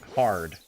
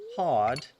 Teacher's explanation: English would have been spoken with a rhotic R, like American English.